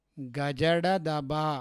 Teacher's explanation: గజడదబ సరళాలు వీటిని ని అల్ప ప్రాణాలు అని కూడా అంటారు.